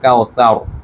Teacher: এখানে আবার র এর মোটা করার নিয়ম, কাউসার, র এর উপরে জবর আছে তাই মোটা র